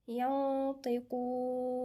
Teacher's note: يوم لا ينطقون في غنة هنا، نون ساكنة وبعدها الطاء في غنة إخفاء